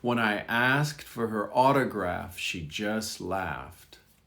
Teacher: You almost don't hear the T. It's implied, but not voiced.